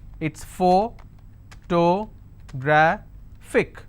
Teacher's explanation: And since it's ending with IC, I will stress on gra. So whatever is the word ending, like you saw, look at the word ending and stress on the previous one.